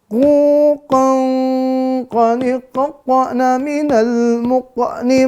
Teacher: Jangan lupa ya, pantulan di muqa nih.